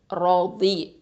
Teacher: தாத் வந்து ஹஃபத்துல் லிசான் எழுத்து, நாவினுடைய ஓரப்பகுதி எழுத்து.